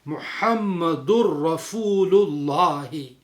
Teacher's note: ادغام بلا غنہ کی وجہ سے اخیر کو ہم ملا کے پڑھتے ہیں